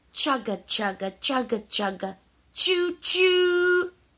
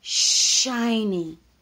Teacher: so the ch sound is short the sh sound is long